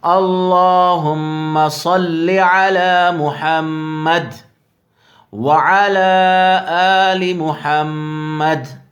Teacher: یہاں پر اگر رکیں گے تو محمد بھی پڑھ سکتے ہیں، اور یہاں پر بھی اسی طرح دال کو دونوں جگہ ساکن کر کے پڑھیں گے